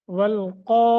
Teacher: بھی کرنا ہے لمبا بھی کرنا ہے مد متصل ہے والقائمین قاف کو موٹا لمبا کریں گے